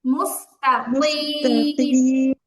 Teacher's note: মুস্তাকিমের কফটা কাফের মতো পাতলা হয়ে গেছে। মুস্তাকিম, কফ মোটা হবে।